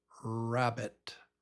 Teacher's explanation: But the tongue is winds up being pulled back. So it's the lips are a little bit round and there's no tap just R.